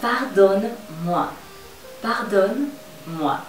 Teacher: La E la puedes enmudecer un poquito si quieres, para que no suene tan rudo